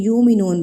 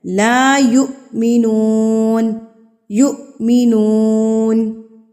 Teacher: جب یہ والی حمزہ ساکن ہوگی، تو اس سے پہلے والا حرف جو ہے وہ جھٹکا دے کے ادا کیا جائے گا. یؤمنون غلط ہے.